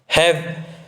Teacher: कंठ के नीचे काकल स्थान से होता है, इन्हें काकलित ध्वनि कहा जाता है दोस्तों। है बोलोगे दोस्तों तो आप कंठ से भी नीचे दोस्तों बोला जा रहा है, ऐसा लग रहा है, हमें प्रतीत हो रहा है।